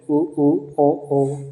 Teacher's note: जिन स्वरों के उच्चारण में होठों के आकार गोल हो जाता है उन्हें वृत्ताकार स्वर कहा जाता है।